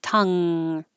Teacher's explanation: bit like uh tongues and this NG combination is the where the back of your tongue goes up very high and touches the top of the back of the mouth tongue and so no air can come out the mouth it